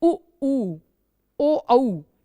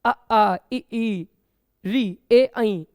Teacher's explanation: उ ऊ ओ औ, इनमें खुद महसूस होगा कि ओठ खिंचके सिकुड़ के गोल हो गए हैं। लेकिन अ आ इ ई री ए ऐ, इनमें गोलाकार ओठों की आकृति नहीं होती। तो ओठों की आकृति के आधार पर बच्चों स्वर दो प्रकार के हैं, वृत्तमुखी, अवृत्तमुखी।